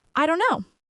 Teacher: This is a very common reduction of I don't know. The T sound in don't disappears and it all blends together.